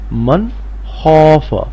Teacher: پڑھیں گے ین او نون زبر نا، ین او نا میم نون زبر من، خا زبر خا، من خا فرفا، من خوف نون ساکن کے بعد خا ہے اور خا حروف حلقی ہے، اس لیے نون کی آواز ناک میں سے نہیں آئے گی